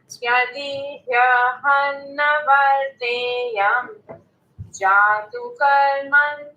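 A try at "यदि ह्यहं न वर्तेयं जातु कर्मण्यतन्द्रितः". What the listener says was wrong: When we are doing the sandhi between hum and na, don't give a pause. So make it quick.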